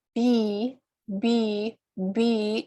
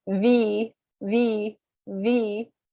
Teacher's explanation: b b b is with two lips and v v v is with my teeth touching my lower lip